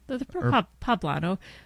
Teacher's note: mole poblano, pronounced with an emphasis on the second syllable like guacamole.